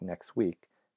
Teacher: you're likely to drop the T in a phrase like next week because the following word week begins with a consonant